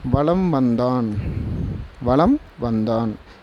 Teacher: இம் சொல்லி முடிக்கறதுக்கு முன்னாடியே வா அப்படின்ற வார்த்தை வந்துருச்சு. அப்போ இம்முக்கான அரை மாத்திரையும் குறைஞ்சு போய் கால் மாத்திரைய ஒளிக்க வேண்டிய நேரம் வந்துருச்சு. · அப்போ வலம் வந்தான் என்பதில் மகர மெய்யெழுத்தை அடுத்து வந்த வகர எழுத்து வருவதால் மகர மெய்யானது தனக்குரிய அரை மாத்திரை அளவிலிருந்து குறைந்து கால் மாத்திரை அளவில் ஒலிக்கிறது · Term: மகர குறுக்கம்